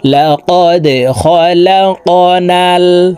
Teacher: দাল কলকলার হরফ নিচের দিকে ধাবিত করে ধাক্কা দিয়ে উচ্চারণ করব।